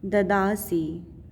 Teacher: स पे ह्रस्व ई, सी बड़ी नहीं करना है, छोटी ही करना है